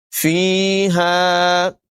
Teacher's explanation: یا مدہ ہے، الف مدہ ہے، فا کو بھی اور ہا کو بھی لمبا کر کے پڑھیں گے